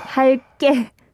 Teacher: you need to pronounce this 기억 as if it is a double 기억